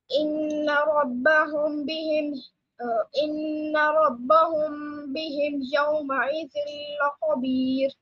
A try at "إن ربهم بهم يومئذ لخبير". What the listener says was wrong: Lam is a light letter again.